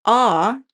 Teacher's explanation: A vowel like ah is low and backed. Your tongue is low in your mouth and pressed backwards.